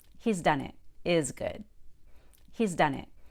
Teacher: When I say he's done it, I like to keep the long E in he's